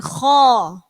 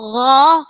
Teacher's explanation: Beda ya, huruf kho dengan gho. Kalau kho itu ada ngoroknya di pangkal tenggorokan, kho. Tetapi kalau gho itu di tengah tenggorokan. Nggih, tidak pakai ngorok.